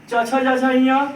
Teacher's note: च छ ज ञ इसको तालु से बोला जाता है